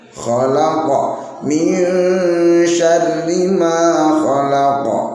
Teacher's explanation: Khoknya harus ada gesekannya